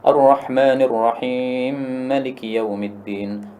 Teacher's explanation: Asalnya Ar-Rahimi ma, tapi karena ini mim ketemu mim, ya, ini berarti mutamatsilain, hurufnya semisal, maka dia menjadi idgham.